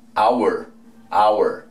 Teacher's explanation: En ningún momento sonó la H